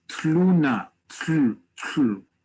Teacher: This is a hard word to say for many English speakers. First off, you have two consonants that for most of English you don't have together without a vowel in between, which is taf and lamed